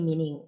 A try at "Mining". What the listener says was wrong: Yeah, but the pronunciation is different. It's mining, not actually meaning.